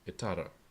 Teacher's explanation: the word initial T in the verbal infinitive prefix, which is always pronounced as a glottal stop